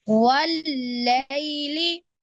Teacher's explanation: वल्लैली, लई में याय मद्दा है, वो याय मद्दा नहीं बल्कि लीन है, क्योंकि या साकिन से पहले जबर आ रही है। वल्लैली, लेकिन दूसरे वाला लाम आपने नहीं खींचना। · वाव की अदायगी के वक्त होंठों को गोल करना है आपने। वल्लैली, फिर वाव को डायरेक्ट लाम से मिलाएंगे, लाम के ऊपर तशदीद है, आप थोड़ा सा रुकेंगे।